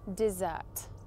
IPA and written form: dɪˈzɜːt (dessert)